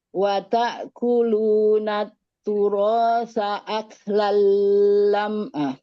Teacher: Tahan dulu, jangan langsung karena taknya bertasydid. Wa ta'kuluna turasa aklan lamma.